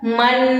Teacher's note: तो नून साकिन के बाद या तनवीन के बाद हरूफे इख्फा में से जब भी कोई हर्फ आएगा तो वहां पे गुन्ना लाजमी होगा, नाक में आवाज ले जाएंगे